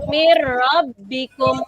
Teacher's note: Bunyi nunnya pada nun sukun atau tanwin menjadi hilang dan masuk pada huruf idgham bila gunnah yang hanya ada 2.